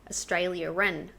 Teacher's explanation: Australia and New Zealand. We put an R in there. Australia-ren. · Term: Intrusive sounds